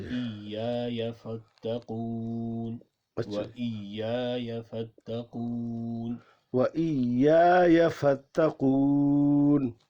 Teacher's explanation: پہلی یا کو لمبا کرنا ہے، دوسری یا کو لمبا نہیں کرنا